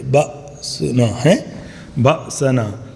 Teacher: ذاقوا بأسنا، یہ ایک ہی لیٹر میں نے بتایا تھا کہ جب حمزہ کے اوپر ساکن ہو تو اس کو جرک کے ساتھ جھٹکے کے ساتھ پڑھتے